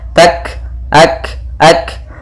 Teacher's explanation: ada kaf berharakat sukun, yaitu ada sifat hamas yang harus ditampakkan